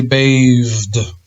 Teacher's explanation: Well, the TH sounds like a V.